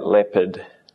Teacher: You don't really hear the R